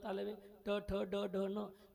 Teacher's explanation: म्हणजे ट चा उच्चार जीभ कुठं लागते? टाळूला लागते. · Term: तालव्य